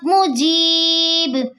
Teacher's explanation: با کے دو پیش حذف ہو جائیں گے، با ساکین ہو جائے گی · مدہ کے بعد با کا سکون عارضی آ رہا ہے، یہاں مد عارض وفی بنے گی، جسے ہم 3 الف کے برابر کھینچ کر پڑھتے ہیں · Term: وف بالاسکان